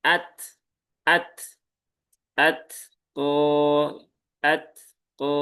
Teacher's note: pastikan ta sukun ini ya ee tertunaikan. Salah satunya ada syiddah dan hames. Ya, maka jangan atqo tetapi at ato atqo.